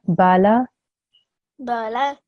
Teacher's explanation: I'm making sure that my ba and my lam are 1 second long because they only have a fatha sign. And that sign means that I do not prolong it.